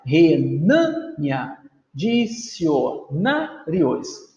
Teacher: São palavras paroxítonas, porque a sílaba tônica é a penúltima. Olha lá, renânia, dicionários, e terminam em ditongo.